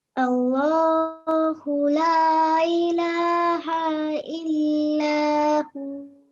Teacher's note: when you're pausing, you have to elongate the hu sound for 2 seconds at the end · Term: vowel mad